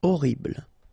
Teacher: first letter is H, but then we don't pronounce H, so you don't pronounce it. And the first thing you hear is O.